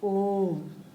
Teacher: प्लुत स्वर, इस स्वर को बोलने के लिए 2 से अधिक मात्राओं का समय लगता है। जैसे ओम, ओम बोलने के लिए हमारा 2 से अधिक मात्राओं का समय लगता है।